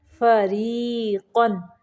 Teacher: را کو باریک پڑھیں گے